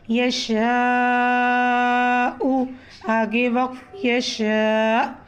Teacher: یہاں پر ہم نے پیش کو جزم میں جب تبدیل کیا، حمزہ پر جزم آنے کی وجہ سے حمزہ پر ہم جھٹکا دیں گے۔